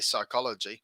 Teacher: there's this redundant p that we don't pronounce